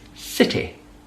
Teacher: It's the last syllable. Instead of the E sound, it's the I sound. So it's just a little softer.